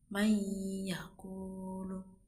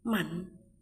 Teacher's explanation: Contoh membaca idgham bi gunnah itu ada mayyakulu, itu sukun bertemu huruf ya, bacanya ada dengungnya